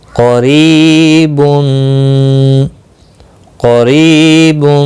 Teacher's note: قاف مستعلیہ ہے، موٹا پڑھنا ہے، اور یہاں پر یا مدہ بنتا ہے ری.